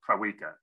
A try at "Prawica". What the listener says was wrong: Yeah, the last name is pronounced Pravita, which is, well, I guess, like pizza. The W is pronounced as a V, but I mostly just go as Adrian as well.